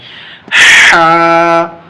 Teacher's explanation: حلق کے اندر سے، جتنا اندر سے ہم نکال سکتے ہیں اتنا اندر سے نکالیں